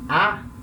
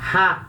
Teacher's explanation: Enquanto que com o espírito fraco a gente fala a vogal normal, como a gente aprendeu, né? A. Com o espírito forte a gente vai ler como se tivesse um H na frente.